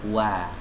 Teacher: Jadi yang monyong bibirnya itu adalah wawunya saja, fathahnya tidak. Jadi bukan wo, tapi wa.